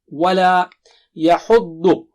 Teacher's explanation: ضاد بہت موٹا اور اونچا ہے